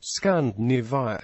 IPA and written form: ˌskændᵻˈneɪviə (Scandinavia)